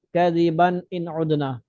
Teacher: نون ساکن اور تنوین کے بعد اگر حروف حلقی، ہم نے حمزہ پڑھا تھا بعد و بربن، یہ تنوین ہے، یہ تنوین کے بعد حمزہ آ رہا ہے، تو پھر اس صورت میں تنوین پہ اخفاء غنہ وغیرہ نہیں ہوگا. کذبن نہیں پڑھیں گے، کذبن ان عدنا.